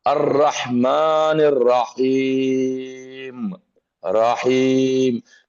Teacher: را کا لفظ تھوڑا سا ایسا پڑھا جاتا ہے جیسے رے کے اوپر زبر پڑھ رہے ہیں، ہمیشہ کہیں بھی وہ آئے گا آپ دیکھ لیجئے اس طریقے سے تھوڑا موٹا پڑھا جاتا ہے۔